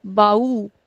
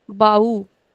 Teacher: accent is on the last syllable